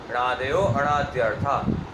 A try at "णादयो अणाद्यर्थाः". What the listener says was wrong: नादयो अनाद्यर्थाः विसर्ग नहीं